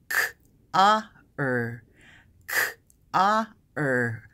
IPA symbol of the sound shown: ɑ: